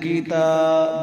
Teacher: تا کھڑی زبر کو ایک الف مقدار لمبا کریں گے